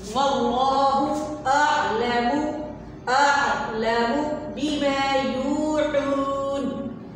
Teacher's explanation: عین کو آپ حلق سے ادا کریں گے، حروف حلقی میں سے ہے تو اس کو حمزہ میں نہیں بدلنا۔